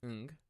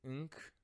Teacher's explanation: They're pronounced in the same place in the back of your throat, and they are called velar consonants.